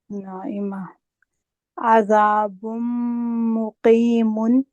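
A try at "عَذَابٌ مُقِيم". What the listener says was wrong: جی آئین کو تھوڑا اچھی سے فلیکسیبل ادا کریں. جی مقیم، تھوڑا سا لمبا کھینچتے ہوئے 2 سیکنڈ کا وقت دیتے ہوئے.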